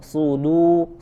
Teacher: Ada huruf dal sifatnya tipis, ya. Jadi dalnya tidak menjadi tebal seperti huruf sod. Sudu, ya. Dunya tipis.